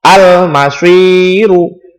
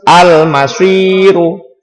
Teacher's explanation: Cara membacanya harus terang dan jelas. Sebagai contoh, al-masyiru. Tidak boleh langsung masuk ke mim. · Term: al-qamariyah